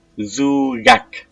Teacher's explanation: But the sound K is pronounced G in between vowels.